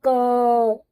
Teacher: इसको बोलते समय देखो लास्ट में अ की आवाज आती है ना, ध्वनि आती है क, देर तक बोलेंगे तो अ की ध्वनि आ रही है, तो वो जो ध्वनि है वो यही स्वर है।